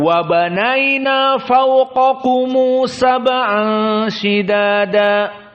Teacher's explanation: di sini hum dan kum dibaca dengan waw madmumah indal wasl, tapi syaratnya harus bersambung. Maka dia dalam keadaan seakan-akan 2 harokat dengan waw. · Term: mad silahnya